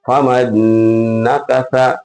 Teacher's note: تو نون کو نون میں ملا کر گنہ کے ساتھ پڑھنا ہے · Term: ادغام ناقص